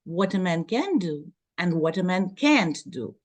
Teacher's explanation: Here we stress can't, the negation